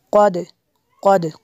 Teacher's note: قاف کو پر کرنا ہے، دال پہ قلقلہ ہوگا